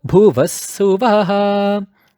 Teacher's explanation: You notice how the Vaha in Bhuvaha went low. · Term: low pitch